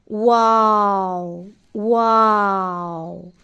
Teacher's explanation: واو دونوں ہونٹوں کو گول کرنے سے ادا ہوتا ہے۔